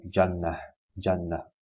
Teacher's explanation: comes from the middle of the tongue and opposite it from the roof of the mouth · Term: Jim